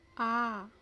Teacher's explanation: विवृत्त, जिन स्वरों के उच्चारण में मुख खुलकर वृत्त का रूप ले ले